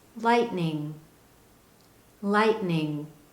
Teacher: you don't clearly hear a t sound at the end of the word light